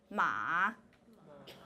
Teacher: when you're doing the Mandarin tone 3, in the middle of it, you're doing a little bit of creakiness. Ma. That you're pronouncing a creaky sound.